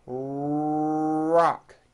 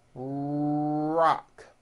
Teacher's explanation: notice how my lips are coming forward and my tongue moves back in my mouth, and I push out the R sound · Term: American R